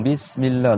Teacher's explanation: Donc dans Bismillah, il y a le S. Donc le S, faut qu'il siffle un petit peu.